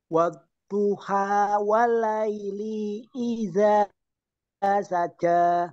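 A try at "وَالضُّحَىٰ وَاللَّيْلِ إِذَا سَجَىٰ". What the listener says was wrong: Awas, itu li-nya pendek. Walaili idza langsung.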